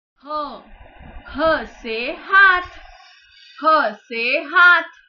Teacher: ह व्यंजन कंठ से प्रोनाउंस किया जाता है, इसीलिए वो कंठ वर्ग में आता है।